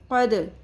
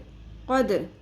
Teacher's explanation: قوف زبر دال ساکن، دال پہ قلقلہ ہوگا